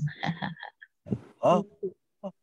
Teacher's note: Baik, kita tahu makhraj dia adalah pada pangkal kerongkong yang kita kena bagi tenaga ekstra. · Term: ha gelak